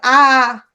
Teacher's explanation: আ, বিশাল বড় হয়ে গেছে মুখ, ফাঁকাটা, তাহলে বিবৃত স্বর হচ্ছে আ